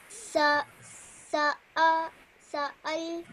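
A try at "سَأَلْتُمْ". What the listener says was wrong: No. Sa'altum. Now over here, do you see that I can see that you're getting a bit confused between an alif and a lam? Then if it's an alif, it will have nothing attached onto it later, okay?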